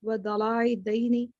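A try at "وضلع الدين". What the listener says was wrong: باقی الفاظ ٹھیک ہیں، لیکن ایک وقت دلع الدینی، دلا نہیں ہے، لام پہ کھڑا زبر نہیں ہے، لام پر زبر ہے، ولع الدینی، باقی ٹھیک ہے ماشاءاللہ۔ آمین، آپ کی دعائیں سب کی قبول ہوں۔ سدرا عرفان آپ پڑھیں۔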